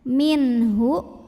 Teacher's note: nun sukun kita bunyikan dengan jelas bunyi n-nya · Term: izhar halqi